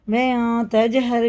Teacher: ان کے پڑھتے وقت مخرج ٹکر کھا کے الگ ہو جاتے ہیں، ٹوٹتی ہوئی آواز سنائی دیتی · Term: قلقلہ